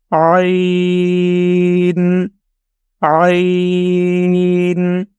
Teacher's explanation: اس کے لیے ہم نے آواز اپنے گلے کے درمیانی حصہ سے نکالنا ہوتی ہے